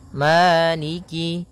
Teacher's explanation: kemudian Maliki yaumiddin maiki yaumiddin pada bacaan Maliki di lafal Ma ada hukum tajwid berupa mad thii yaitu adanya fathah bertemu dengan alif panjangnya dua harakat